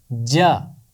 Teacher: जीम का मखरज है ज़ुबान का दरमियान और ऊपर का तालू। इन दोनों को मिलाने से जीम की आवाज़ अदा होती है